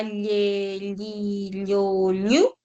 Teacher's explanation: Y luego tienes la lateral palatal, que es la doble L. Cuando dices la llei, llu, el aire sale por los lados.